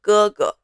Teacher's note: The second character is in a neutral tone. That is we don't call them G, we call them GG.